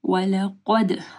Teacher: قاف کو موٹا پڑھنا ہے، دال کے اوپر کلکلہ کرنا ہے